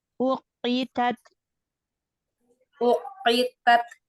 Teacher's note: Qafnya ya aja yang tebal, ta-nya tipiskan